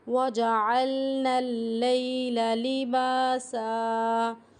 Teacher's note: نون کو ہمیں لام کے ساتھ ملانا ہے، لئی کی آواز آنی چاہیے، لے کی آواز نہیں آنی چاہیے